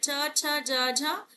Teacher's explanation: हमारे जो है स्पर्श संघर्षी, स्पर्श भी करते हैं और संघर्षी भी होते हैं